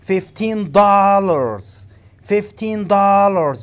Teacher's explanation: You have to put the stress on dollars.